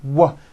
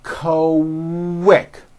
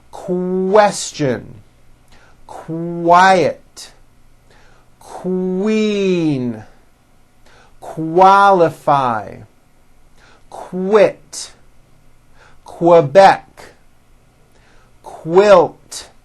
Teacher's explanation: How are Q sounds related? Well, Q sounds are made with the K sound, k, k, and the W sound, w, put together.